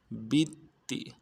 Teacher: با کو تا کے ساتھ ملانا ہے، تا کے اوپر تشدید ہے، زور دیں گے